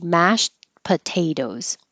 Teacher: like a tea but you don't have to release the tea your tongue just goes to the T position so you won't hear that at all it'll just sound like mash but we really are thinking mashed but no tea mashed potatoes